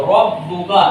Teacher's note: रा को पुर करने का तरीका यह है कि ज़बान का अगला हिस्सा उठा के कपकपाता हुआ रखना होता है।